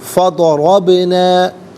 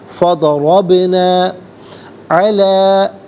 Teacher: با ساکن ہے، لیکن چونکہ حرف قلقلہ ہے تو یہاں ادائیگی کے وقت آواز لوٹتی ہوئی محسوس ہونی چاہیے